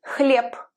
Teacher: It's written as h, l, ye, b at the end, but we pronounce it as p